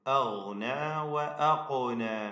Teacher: ഖാഫിന് ഖൽഖല നൽകണം, സുകൂൻ ആയതുകൊണ്ട്.